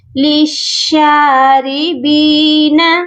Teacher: یہاں پر ہم لام کو نہیں پڑھیں گے، مشدد لام کو مشدد شین کے ساتھ ملا دیں گے۔